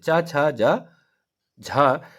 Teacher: च छ ज झ यह सब आपके तालू से बोले जाते हैं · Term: तालव्य व्यंजन